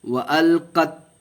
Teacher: یہاں قط نہیں پڑھیں گے کیونکہ قلقلہ نہیں ہوگا، یہ چھوٹی تا ہے